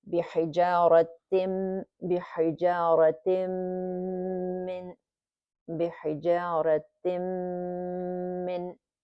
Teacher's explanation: Okay, so tanween gets merged with the mim mushaddada, and then the rule is this is idgham kamil بغنة haraka, meaning it's a complete merging with the nasal sound. We hold it for 2 beats.